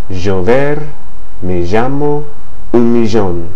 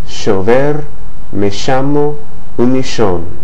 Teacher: it can vary between the vibrating sound of the S in the English word like pleasure, pleasure, or treasure, and the SH sound of the English word cashier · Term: River Plate dialect